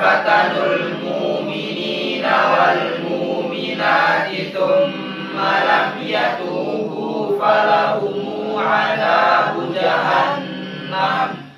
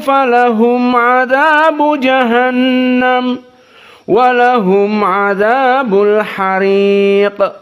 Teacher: dan qiraah Wars tidak ada silatul mim